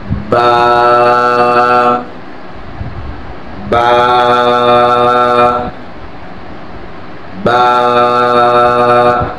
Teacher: এরপরে আছে বা, বা হবে 2 ঠোঁটের ভিজা অংশ থেকে। আমরা যে ঠোঁটটা বন্ধ করে যেটা দেখা যাচ্ছে এটা কিন্তু ভিজা অংশ নয়, যেটা বন্ধ দেখা যায় না সেটা হচ্ছে ভিজা অংশ।